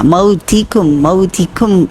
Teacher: ہمز کیا ہے کہ سانس کی آواز بھی تھوڑی سی شامل کریں، آواز کے ساتھ ساتھ سانس کی آواز بھی شامل ہوگی تاکہ حرف جو ہے وہ صحیح ایکسنٹ کے ساتھ ادا ہو۔ تا کاف دونوں میں ہمز ہوتا ہے، ایسا نہیں ہو کہ اردو کی طرح تا پڑھیں کاف پڑھیں، تو ایسے نہیں کرنا۔